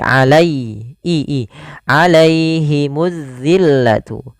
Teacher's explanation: sempurna dalam melafalkan kasrohnya, melafalkan ya sukunnya, jangan alaihimu, jangan dibaca terdengar huruf e, tapi alai i alaihimuz zillatu. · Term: bacaan lin